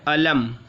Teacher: हालांकि मीम में बहुत सारे ऐसा भी कर देते अलम अलम, तो मीम में आवाज़ लौटनी नहीं चाहिए, है ना, ये कलकला में से नहीं है